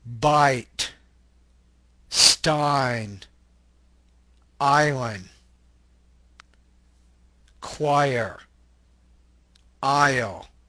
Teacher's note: The ah sound glides into the E.